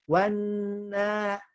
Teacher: Ditahan dulu karena ada tasdidnya, nun bertasdid, kemudian diayunkan karena ada tanda panjang pendek.